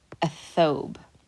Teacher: you do not pronounce the lam you skip over it